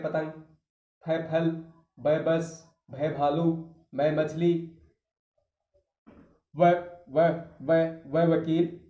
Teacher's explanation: दोनों होठों को मिलाने पर बोले जाएंगे। इसलिए इसे ओष्ठ व्यंजन कहा जाता है।